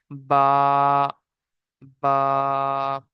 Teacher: ঠোঁটের ভিতরের সাইডে যে ভিজে অংশ আছে, দুই ঠোঁটের ভিজে অংশ দিয়ে উচ্চারিত হয় বা